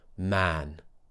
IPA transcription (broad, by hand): æ